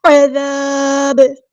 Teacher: جب ہم با کو ساکن کر دیں گے وقف کرتے ہوئے تو یہاں پہ قلقلہ ہوگا